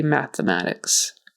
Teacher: just make sure it's a t H and you don't say it with a t sound like mathematics